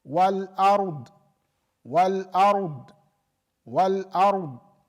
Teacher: So the ra, there is no flow of air as it comes out.